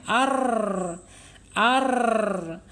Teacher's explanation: apa itu takrir takrir itu bergetar